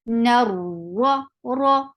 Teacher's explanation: Ra will be heavy here because whenever ra is with fatha or dhamma, it is heavy. So the heavy sound, raw sounds like raw material, as you say.